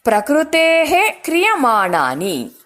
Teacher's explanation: ವಿಸರ್ಗ ಆದ ನಂತರ ಕ ಅಕ್ಷರ ಬರೋದ್ರಿಂದ ಹಕಾರವನ್ನ ಹೇಳಬೇಕು